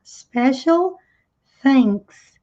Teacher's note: TH com som de S com a língua presa.